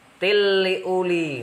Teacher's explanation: Kemudian la ayati, ada 2 bacaan yang sama, yaitu mat tabi'i juga panjang 2 harokat. Tilli uli, hukum bacaannya adalah idgham bila gunnah karena ada tanwin bertemu dengan lam, dibaca masuk tanpa dengung